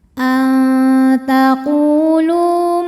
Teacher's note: ujung lidah kita siap-siap mau ke pangkal gigi seri. Tapi baru baru mau ya belum nyentuh. · karena ada wau sukun didahului baris dammah maka lam panjang dua harakat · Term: ikhfa aqrab, mad thobi zohiri